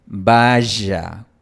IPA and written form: 'ba.ʒa (vaya)